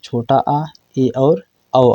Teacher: अर्ध विवृत जिसमें मुह का लगभग आधा भाग खुलता है